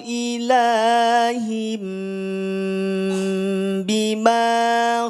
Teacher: tanwin pada huruf Ha ini akan berubah bunyinya menjadi mim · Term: iqlab